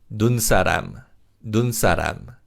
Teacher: When you say this word 사람, 시옷 becomes a 쌍시옷 sound.